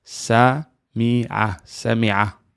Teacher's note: Yeah, like not like you're strangling yourself, but you're there's a little tension in the larynx.